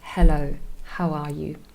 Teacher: Very soft, very breathy, and not very harsh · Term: glottal sound